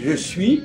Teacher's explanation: Le système de la prononciation de la langue. Je suis, je ne prononce pas le S de je suis